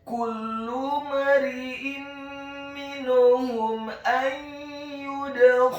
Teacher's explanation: Huruf mim yang sukun bertemu dengan huruf alif yang fathah, hukum bacaannya adalah izhar syafawi. Dibaca dengan jelas, tidak boleh digunakan huruf mim yang sukunnya.